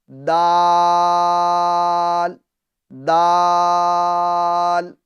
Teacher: زبان کی نوک اور اوپر کے دانتوں کی جڑ سے، جیسے تا ادا ہوتا ہے ویسے ہی دال بھی ادا ہوتا ہے، ٹھیک ہے۔ تو دال کو بھی اسی طریقے سے ادا کیجئے جیسے آپ نے تا کو ادا کرا تھا، ٹھیک ہے۔